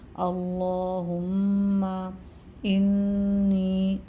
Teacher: نون مشدد پہ غنہ ہوگا ایک الف کی مقدار تک